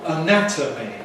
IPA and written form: əˈnætəmi (anatomy)